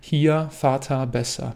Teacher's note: Es ist eher ungewöhnlich, hier zu sagen oder besser. Ich würde dir empfehlen, dieses R vokalisch auszusprechen.